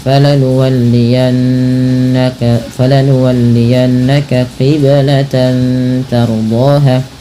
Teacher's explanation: Maka di sini tanwinnya diwarnai dengan warna hijau, yang artinya apa? Ia dibaca dengan bacaan ikhfa hakiki, yaitu dengan menyamarkan bunyi tannya kepada huruf ta.